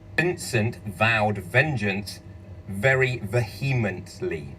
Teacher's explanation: 佢點解佢有話buzz咧？因為佢咧其實有震聲帶啦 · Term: 濁音